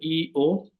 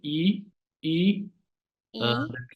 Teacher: this is a sound in between E and O first pronounce e then o we pronounce them together e o